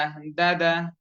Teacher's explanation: গোড়াকে স্পর্শ করবে জিহ্বার আগা অটোমেটিকালি সামনের উপরে দুই দাঁতের গোড়ার সঙ্গে মিলিত হয়ে বা স্পর্শ হয়ে বা যুক্ত হয়ে দাল অক্ষরটি উচ্চারণ হয়ে যাবে